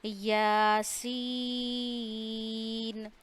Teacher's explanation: تو سین کو ہم نے 3 الف جتنا کھینچنا ہے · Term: مد لازم